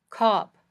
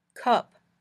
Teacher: when you say ah your tongue is lower in your mouth your mouth might be more open when you say ah then when you say uh